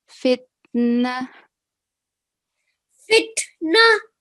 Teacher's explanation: when we have ta marbuta, a word that ends in ta marbuta, it will change into ha sakin